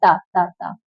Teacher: दांत दांतों का सहारा लेके बोला जाता है। जीभ दांतों पे जाके लगती है। अल्पप्राण है। अघोष है। चलिए देख लेते हैं।